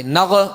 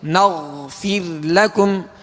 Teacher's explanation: غین کا سکون کامل ادا کریں گے. اس میں قلقلہ نہیں ہوگا، جنبش نہیں ہوگی.